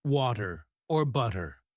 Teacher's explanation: the flap T sound, where the T sounds like a soft D, as in water or butter.